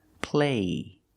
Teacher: There's no stop T, so the vowel is longer here.